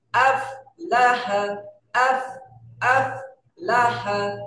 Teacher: আপ না, আফ, বাতাস চালু থাকবে